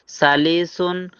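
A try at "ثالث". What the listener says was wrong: সালিসুন, টান আছে, সালিসুন। সালিসুন বললে তো মনে হয় যে তায়ের পরে আলিফ নাই, লামের পরে একটা ইয়ে আছে, সালিসুন, কিন্তু শব্দটা হলো সালিসুন।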